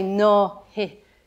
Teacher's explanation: there's two vowels coming together so we we introduce a soft h there